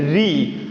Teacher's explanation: तो इसको आप खुद ही ट्राई कर सकते हैं, बोलकर देख सकते हैं कि री यानी जो जीवा होती है वो उल्टी फोल्ड होते हुए ऊपरी भाग को टच करती है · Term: मूर्धन्य